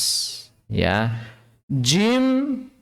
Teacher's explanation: jim dalam bahasa Arab ini menggunakan bagian tengah lidah